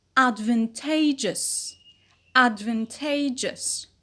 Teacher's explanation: Not only a shift in the stress from van to te, but also a change in the vowel quality. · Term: stress shifting suffix